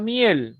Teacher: vocal cerrada primera y luego la vocal abierta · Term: diptongo ascendente